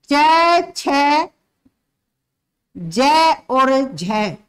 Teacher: स्पर्श भी है और संघर्ष भी है उनमें। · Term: स्पर्श संघर्षी व्यंजन